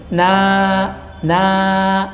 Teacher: jangan dikeluarkan dari hidung suaranya tapi ke mulut ya dipindahkan ke mulut